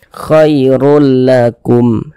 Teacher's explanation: Yang dimasukkan tuh bunyi tanwinnya, kita baca khairul. Jangan dibaca khairun, jangan, tapi masuk ke huruf lam, melebur ke huruf lam. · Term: idgham bila gunnah